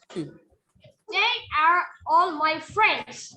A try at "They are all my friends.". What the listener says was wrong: Don't break the words. They are.